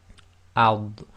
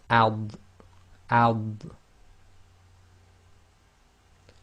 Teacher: again it's thick letters, so the back of the tongue will come up a bit, ad. And remember, the dad is normally pronounced with the left side of the tongue touching the upper left teeth.